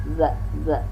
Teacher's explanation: Za ini ujung lidah dengan ujung gigi yang di atas.